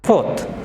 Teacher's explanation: থার্ড, থার্ড। ফোর্থ, এখানে আর এর পরে কনসোনেন্ট টি, কাজে এখানে আরটা উচ্চারণ হবে না